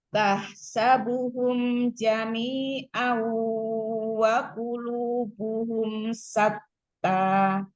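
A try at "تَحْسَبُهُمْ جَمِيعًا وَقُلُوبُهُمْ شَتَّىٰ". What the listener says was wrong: Huruf ainnya coba dikeluarkan, tampakkan. Jami'an wa. Tahsabuhum haknya di tengah tenggorokan. Tahsabuhum.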